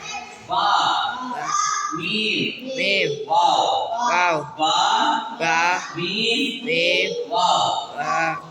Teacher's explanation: இவைகள் 2 உதடுகளிலிருந்து வெளியாகும். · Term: 14வது மக்ரஜ்